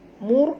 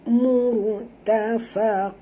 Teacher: ra ini mati, jadi dia kena baca tebal dengan huruf sebelumnya baris depan